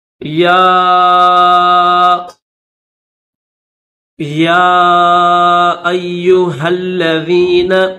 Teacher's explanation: تو اس کو تھوڑا سا کھینچیں گے، یا ایھا الذین، ہل، ہا کو لام کے ساتھ ملائیں گے